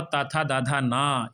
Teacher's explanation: ताथा दाधा ना, इन सभी का उच्चारण जो है दंत से होता है, इसलिए इनको दंत वर्ण या दंत व्यंजन कहते हैं।